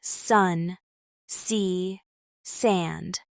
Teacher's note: In English, S is made with the tongue close to the roof of your mouth but not touching, letting air pass through. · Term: S sound